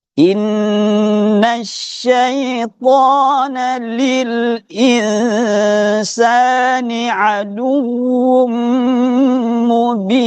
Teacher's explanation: syai ini bertasydid, penekanannya besar gitu. Jadi desisnya besar.